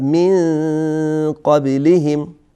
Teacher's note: اینجا نون ساکن هست، بعدش قاف میاد، من قبلهم. اینجا باز هم اخفا صورت میگیره